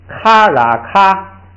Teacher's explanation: 后加字然的作用是把元音字母拉长一点 ，所以呢就是好读。后边卡啦卡，枪啊枪，喇嘛啷，哎，下边一个，下边带元音，带元音之后啊，这个它有一个情况就是，它不是读卡那若阔那空，它不是这样读，就是带元音的时候啊，它读完元音就把整个单词的那个读音读出来，就实际包含了后加字。它有这么一个特点，就是凡是带元音的那个字母拼读的时候，只要读完元音，后边这个发音呐，就把全字母的那个最后发音发出来。咱们来啊，卡那若空啊空，卡